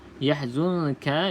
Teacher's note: Kena berlatih lah, kena berlatih. Yahzunka, nun kosong selepasnya bukan lam ataupun ra, maka kita baca dengung 2 harakat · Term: ikhfa hakiki